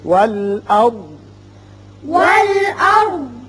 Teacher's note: یہاں ضاد ساکن ہو جائے گا اس لیے کہ یہاں علامت وقف مطلق کی ہے. یہاں وقف کریں گے.